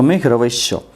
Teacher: तो च का जो उच्चारण स्थान है वो है इचु यशानम तालु, मतलब यहाँ पर चवर्ग का जो उच्चारण स्थान है वो तालु से होता है। तो इसलिए ये जो आपका विसर्ग बदलेगा ये भी तालु वाला श में बदल जाएगा, अर्थात तालव्य श में बदल जाएगा। यही कारण है कि मेघ रवैः जोड़ च, मेघ रवैश्च देखिए यहाँ पर तालव्य श हो गया है।